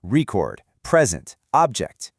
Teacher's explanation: For the nouns, the stress is up front.